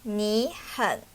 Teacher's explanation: If the third tone appears in the middle of the sentence, then you just need to pronounce it as a low tone. Just stop at the lowest point of your voice. For example, here just say 你很 instead of 你很. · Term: half third tone